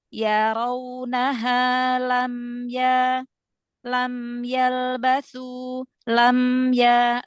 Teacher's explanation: Jadi dia enggak tertahan tapi juga enggak mengalir panjang ya. Aliran suaranya sedang karena dia punya sifat bainiah kan ya baina baina antara syiddah dan rakwah.